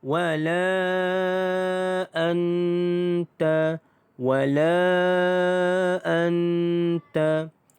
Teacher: La dibaca dengan panjang 5 harakat. Kerana mad jaiz munfasil itu mad asli bertemu dengan hamzah dalam dua kalimah mad jaiz munfasil.